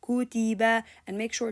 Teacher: If I have kutiba, for example, I have to give kaf time equal to the ta time equal to the ba time. So kutiba, kutiba, and make sure to join the sound together.